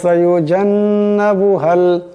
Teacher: এখানে নুন মুশাদ্দাদকে এক আলিফ পরিমাণ গুণনা করে পড়তে হবে। আর এই কাফ মিলায়া পড়লে এই কাফ এই লামকে ধরবে।